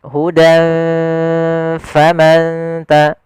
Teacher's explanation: maka kita samarkan ke bibir kita dengan seakan-akan kita langsung mau mengucapkan huruf fa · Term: ikhfa